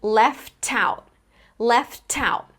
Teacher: The t gets connected to the beginning of the next word.